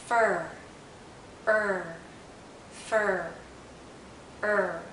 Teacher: for IR the tip of our tongue is actually curled backward and as it curls back the central part of her tongue